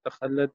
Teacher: لام مشدد ہے یہاں، اور تا ہمس ہوگا۔ صحیح، اس اس میں دونوں صورتیں ہیں، رکنا یا نہیں رکنا، لیکن تا ہمس ہوگا دونوں صورتوں میں۔